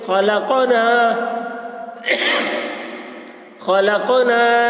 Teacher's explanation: الف مدہ کو ایک الف کے برابر کھینچ کر پڑھیں گے